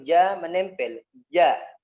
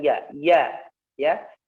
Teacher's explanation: Ja, sya, dan ya. Tengah lidahnya disentuhkan ke atas. Kalau ja menempel, ja. Kalau sya ya merenggang sedikit ya.